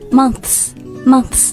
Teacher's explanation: 见的一个东西是什么呢？就是轻辅音▁th,▁然后再加上一个复数轻辅音的▁s.▁这种比如说，那个▁the▁smiths,The▁Smiths,▁那我们平时说的时候呢就要把两个音都发出来▁Right?Right,▁or▁maybe▁the▁word▁months对就是那个月份然后加上▁S▁复数这两个音都要发出来▁Months,▁months▁它们的难点呢就在于说 你要先咬住舌尖然后再迅速把舌尖放开发下一个辅音